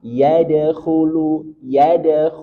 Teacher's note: Dal punya sifat qalqalah, tetapi karena dia di tengah kata, maka qalqalahnya suro. Tidak terlalu nampak.